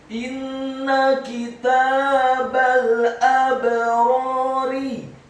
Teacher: Kemudian kata kitabal, huruf kafnya dibaca tipis kasrah satu harokat, huruf ta-nya dibaca tipis fathah dua harokat karena harokatnya tegak. Kemudian huruf ba-nya dibaca tipis fathah cukup satu harokat saja karena setelahnya langsung disambung ke huruf lam yang sukun